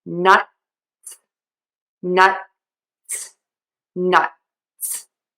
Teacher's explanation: I touch unreleased t and then I pull the tongue away for the s and keep the air moving.